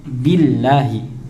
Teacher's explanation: maka senyum ya, biar sempurna, tidak terbaca imalah atau alias miring ke e. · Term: kasroh